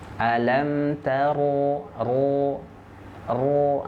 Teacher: ciri-cirinya ada tiga nanti vokalnya O Bulat bunyinya lalu bergema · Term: huruf tebal